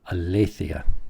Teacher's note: Notice the accent is on le.